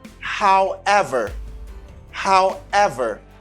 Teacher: The stress is in ever. Accent tonique là, c'est sous ever.